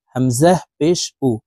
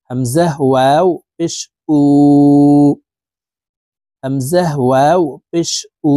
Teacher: প্রিয় দর্শক দেখুন, এই যে এখানে শুধু হরফের উপরে পেশ আছে, শুধু পেশ আছে, তাই এই হরফকে দ্রুতভাবে ঠোঁট গোল করে পড়তে হবে